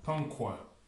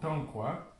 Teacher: c'est juste le A qui est ce qu'on appelle nasillé, qui se prononce, au lieu de se prononcer A, il va se prononcer An.